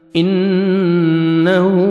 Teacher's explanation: نون مشدد غنہ کریں گے، ہا کو مر الٹا پیش ہے، 1 سیکنڈ آپ نے کھینچنا ہے، واو مدہ کے قائم مقام ہے.